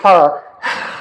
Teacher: huruf ha itu dipanggil hamas. Suara mengalir keluar.